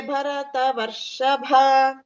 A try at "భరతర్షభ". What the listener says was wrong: వ లేదు అక్కడ భరతర్షభ వ అనేది లేదు మేడం